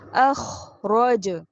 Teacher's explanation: خو کو پتہ ہے آپ کو کہ موٹا حرف ہے، خرخراہٹ کے ساتھ ہے